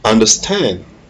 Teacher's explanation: the stress is on the last syllable, stand